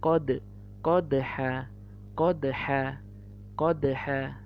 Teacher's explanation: Lihat, salah satu huruf qalqalah adalah dal, maka ketika dia bertanda sukun menjadi qalqalah, bacanya jadi mantul. Yang aslinya bacanya qadha, ketika dia menjadi qalqalah mantul menjadi qad, qadha, qadha. · Yang aslinya bacanya qadha, ketika dia menjadi qalqalah mantul menjadi qad, qadha, qadha. Nah, itu bentuk mantulnya ya.